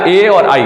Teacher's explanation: फिर है एदयितो कंठ तालु, कंठ और तालु दोनों मिक्स में से हवा बाहर निकलेगी तब निकलेगा ए और आई